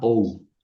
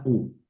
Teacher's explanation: formalmente es un diptongo, pero no suena como diptongo